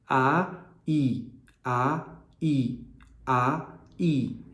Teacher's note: quando a gente fala ai ai ai começa aberto e termina fechado e aí mais uma vez é o movimento da mandíbula movimento · a mandíbula, quando você faz A, ela está bem aberta. E quando você faz I, ela está bem fechada.